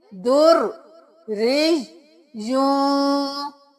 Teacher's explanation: ریش کیا تو یا کی آواز آئی، یوں کیا تو پھر یا کی آواز آئی، در کیا تو رو کی آواز آئی، ری کیا پھر رو کی آواز آئی۔ تو یہ رو بھی 2 بار ادا ہوگا، یا بھی 2 بار ادا ہوگا، یہ والا یا بھی 2 بار ادا ہوگا۔ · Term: تشدید